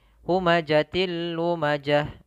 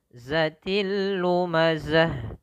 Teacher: zai ini sifatnya sama sifat sofir dan sifatnya adalah dia sifat hamas. Hamasnya mengalir juga nafas tapi dia tertahan ya.